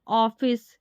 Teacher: ये आ और ओ के बीच की ध्वनि होती है।